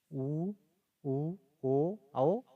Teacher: वृत्ताकार में क्या होता है, इसमें जो है ओठ होता है गोल हो जाता है जब उच्चारण किया जाता है